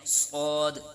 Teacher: इसको आपने पुर भी पढ़ना है और जब इसको आप पढ़ेंगे स्वाद तो सीटी की आवाज भी निकलेगी